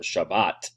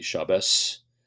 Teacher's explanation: And so one word, for instance, that is different in pronunciation is the word for Sabbath, or Shabbat. That the tav at the end of that is pronounced with a t sound instead of an s sound. In the Ashkenazic pronunciation to be Shabbos, but the modern Hebrew follows the Sephardic pronunciation.